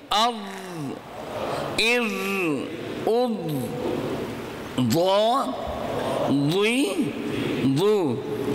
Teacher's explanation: اوپر اور نیچے دونوں داڑھوں کو کھول کر ان کے درمیان زبان کو رکھیں گے اور حرف ضاد ادا کریں گے